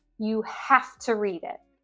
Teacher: I really want my friend to read it, so I emphasize have. It's not have with this V sound that we've probably all been taught, but half.